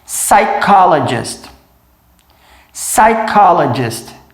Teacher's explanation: Reparem que a gente não pronuncia o P. O P é mudo. Vai direto para o S